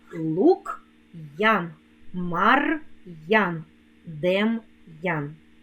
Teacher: коли ми вимовляємо слова з апострофом то вимовляємо роздільну вимову твердого приголосного апостроф робить приголосний Який перед ним стоїть твердим лук Ян Мар